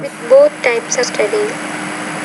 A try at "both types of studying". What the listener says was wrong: now, when you say both types, you need to pronounce that T with more air.